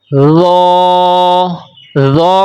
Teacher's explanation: ذو کو ہم موٹی آواز سے بھی پڑھیں گے لیکن سیٹی کے بغیر پڑھیں گے